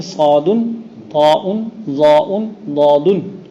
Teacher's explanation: یہ حروف متصف ہیں ساتھ اطباق کے، یعنی ان کے ادا کرتے وقت اکثر حصہ زبان کا تالو سے مل جاتا ہے